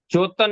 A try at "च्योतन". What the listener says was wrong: आधा श है ना, च्योतन।